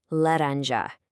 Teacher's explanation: In Portuguese, this is not a hard, punchy English J like in jump. No, it's a very soft zh sound